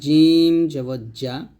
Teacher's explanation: জিম জিহ্বার মধ্যখান তার বরাবর উপরে তার সঙ্গে লাগবে